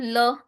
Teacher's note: ल दंत से टकरा रही है आपकी जीभ